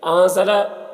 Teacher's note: نون میں اخفا ہوگا، نون کی آواز کو ناک میں چھپا کر پڑھیں گے